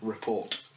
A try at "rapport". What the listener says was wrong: Report. Do it again without the T.